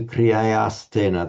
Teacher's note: The visarga mandatorily becomes a s before or following t.